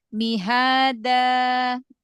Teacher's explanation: Makhraj huruf dal, majukan lagi ujung lidah ketemu dengan ujung gigi tempat tumbuh gigi seri atas.